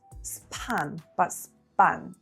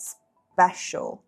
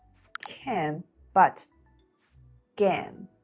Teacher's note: when p or c are in a consonant cluster after s at the beginning of a word or syllable, they're unaspirated, which means there's no puff of air when we say them